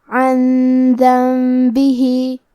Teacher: کلمت ذنبہ، دال حروف الاخفاء میں سے ہے اور اخفاء کا معنی ہے چھپا دینا. تو ہم نون ساکن کو چھپاتے ہوئے اور غنہ کے ساتھ یہ حکم کو ادا کریں گے · کلمت عن میں عین کے ادائیگی حلق کے درمیان والی حصے سے ہے. پھر یہاں نون ساکن ہے اور اس کے بعد حرف الدال ہے.